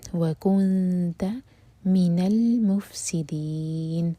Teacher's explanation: آخر میں دی 4 حرکہ لمبا، کیونکہ نون کو ہم ساکن کر کے رک رہے ہیں، تو یہ ہوگا مد عارض للسکون